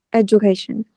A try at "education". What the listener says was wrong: Đấy, không phải âm đờ nhé. Education. J. Ừ, education. Đấy, cái này âm đờ nó ta âm giờ mà.